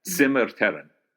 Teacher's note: both the R's are rolled, and the stress is on the first syllable, and it's TSIM.